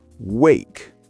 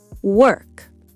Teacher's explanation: Your mouth opens wide. And work. Your lips are smaller, like a circle.